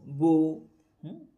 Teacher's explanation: বু বলার সময় আরবিতে এই মুখটা গোল হয়ে যায় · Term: পেশ